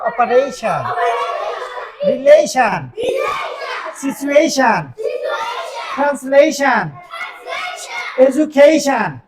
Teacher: TION যদি কোনো ওয়ার্ডে একত্রে থাকে তাহলে টিআইওএন এর উচ্চারণ হবে শান শান। এখন টিআইওএন এর আগে যদি একটা এ থাকে তাহলে এর উচ্চারণ হবে এই, এবং সেটা জোর দিয়ে বলতে হবে।